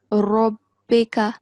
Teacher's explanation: Ra has the fatha stroke, right? So the sound of Ra is going to be thick.